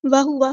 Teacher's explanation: واو کی زبر کو لمبا نہیں کریں گے, حرکات کو لمبا نہیں کرتے